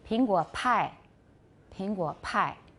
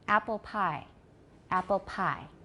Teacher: You have stronger aspiration in Mandarin.